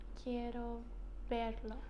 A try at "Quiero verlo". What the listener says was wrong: you're getting really good at pronouncing V's, much better than me.